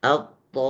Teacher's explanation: Jadi to-nya yang dipanjangkan menjadi 6 harokat sama dengan 6 huruf to. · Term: mad lazim